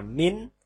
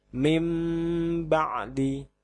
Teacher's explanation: Maka nun sukun ini harus berubah menjadi mim mati. Tidak boleh dibaca min, tapi mim ba'di. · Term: iklab